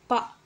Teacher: ப இதழ் ரெண்டும் ஒற்றதுனால பிறக்கிறது